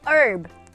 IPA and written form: ɜrb (herb)